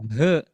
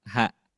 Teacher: Begitupun huruf ha, tidak dibaca he, tapi ha, tipis